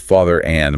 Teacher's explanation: but father and might have a slight linking R.